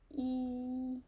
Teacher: 一 is high and long and flat. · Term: first tone